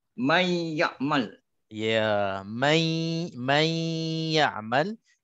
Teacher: nun dimasukkan ke dalam ya, tetapi disebabkan dia ini dengung dan juga dia tak sempurna masuknya nun ataupun tanwin ke dalam ya, maka adanya dengung. Dengungnya kadarnya 2 harakah. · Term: idgham bi gunnah